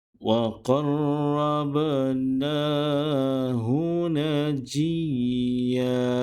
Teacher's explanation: Huruf ba perlu dibaca dengan sebutan qalqalah kerana huruf ba termasuk salah satu daripada huruf-huruf qalqalah.